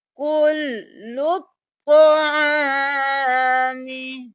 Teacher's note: تو کو موٹا پڑھیں گے